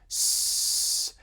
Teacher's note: a little bit of air flowing through that narrow constriction between your tongue and the alveolar ridge. It winds up hitting the back of your teeth, which is why it winds up being so loud and noisy, but S is alveolar.